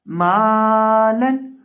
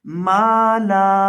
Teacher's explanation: ایک زبر کو گرا دیا جائے گا اور ایک زبر اور الف باقی رہ جائے گا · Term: وقف